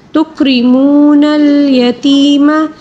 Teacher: را کو باریک پڑھیں گے کیونکہ را کے نیچے زیر ہے